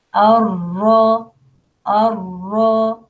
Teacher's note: ra heavy here, elevate the posterior part of the tongue